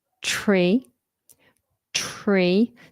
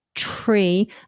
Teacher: So you have a tongue bunching happening. You touch for the T, but instantly bunch. Tree. And notice how I'm rounding my lips, ready for the R sound.